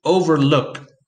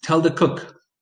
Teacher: has the stress on the last syllable